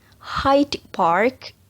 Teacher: cara pengucapannya D sound-nya becomes B. Hyde Park becomes High Park.